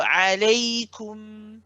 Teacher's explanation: I want to hear you finish the sound of the u, the dhamma of the kaf.